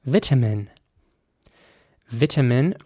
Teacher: with an e sound for the i there at the beginning vitamin and a very strong t sound vitamin in american english the i at the beginning would be